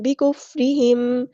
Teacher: میم ساکن پر ٹائم نہیں دیں گے ، اس طرح نہیں پڑھیں گے، بکفرہم ایسے ٹائم نہیں دینا،